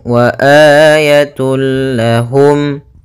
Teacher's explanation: dengan huruf idgam Bil gunah yaitu huruf lam di sini maka cara membacanya masukkan tanwinnya kepada huruf lam tanpa ditahan gunah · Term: Idgham bila ghunah, idgham bila gunnah